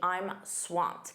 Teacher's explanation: That ed d is a soft t. · Notice that pronunciation, that ED is a soft T.